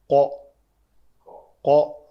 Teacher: قوف کے لیے لوتھڑا جو ہے وہ کوا جسے ہم کہتے ہیں وہ بالمقابل تالو کے ساتھ لگتا ہے، قو قو گلے کے ساتھ نیچے۔